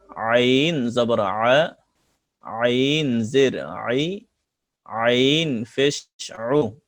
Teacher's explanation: আইন কণ্ঠনালীর মাঝখান থেকে আইন অক্ষর গলা চিপে পড়তে হয়।